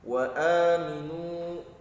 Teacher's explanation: a-nya terdapat hukum mad badal, harus baca panjang 2 harokat